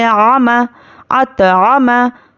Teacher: आइन पर ज़बर है, मीम पर ज़बर है, बिल्कुल भी नहीं खींचेंगे